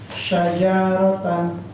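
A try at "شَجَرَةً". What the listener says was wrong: Jangan panjang jaknya. Jangan panjang ha.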